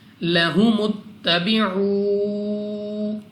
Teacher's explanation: واو ساکن سے پہلے پیش واو مدہ، اس کو بھی 2 سیکنڈ تک کھینچ کر پڑھنا ہے